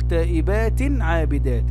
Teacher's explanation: هنا تائبات تنوين، اللي تحت حرف التاء هذا، في تائبات جاء بعد التنوين حرف العين، والعين من حروف الإظهار